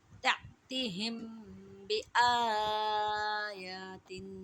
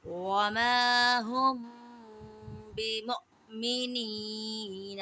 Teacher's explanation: اب یہ ہمارا اخفاء شفوی کا قواعد آ گیا۔ میم ساکن کے بعد با آ جائے تو میم ساکن میں اخفاء شفوی ہوگا، یعنی غنہ کریں گے۔